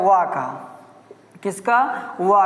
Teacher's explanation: वा का उच्चारण स्थान होता है दंतोष्ठ।